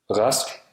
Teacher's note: At the beginning of words, R is pronounced as R, a voiced uvular fricative, or R, a voiced uvular approximant at the back of the throat.